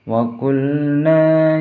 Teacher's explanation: nanya panjang karena dinamakan mad tabi'i, ada harokat fathah bertemu dengan alif